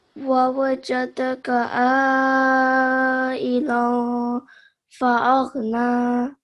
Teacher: You made the ayn sound and you did the light nasal sound for the tanveen and you also emphasized the ghain